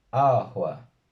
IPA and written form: 'a.hʷa (AǶA)